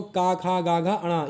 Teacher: ये दोस्तों कैसे बोले जाते हैं, कंठ से बोले जाते हैं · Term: कंठ वर्ण